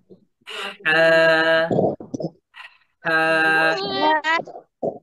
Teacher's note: একটু গলা চেপে বাতাস বাহির করতে হবে, গলা চেপে। হলকের মাঝখান থেকে হা উচ্চারিত হয়, হলকের মাঝখান থেকে।